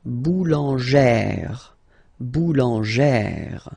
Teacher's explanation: you pronounce it like E, really open E sound